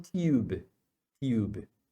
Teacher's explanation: no inglês britânico eles falam tube tube eles falam esse you tá E então pode acontecer né ter alguma variação assim também